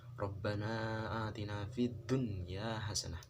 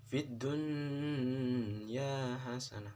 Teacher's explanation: dari Hai huruf izhar halqi tapi khusus untuk kata ini atau nun sukun bertemu dengan ya yang dalam satu kata maka dibacanya jelas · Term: idzhar wajib